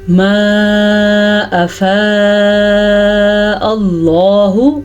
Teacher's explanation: اللہ کا نام ہم نے پر پڑھا ہے کیونکہ اللہ کے نام سے پہلے حرف کے اوپر زبر ہے